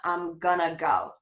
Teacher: sometimes we drop that final g and compress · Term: reduced speech